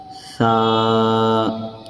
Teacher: زبان کی نوک اور اوپر کے دونوں دانتوں کا کنارہ، اس جگہ سے ادا ہوتا ہے سا